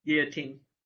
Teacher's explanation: I like to pronounce it without the L sound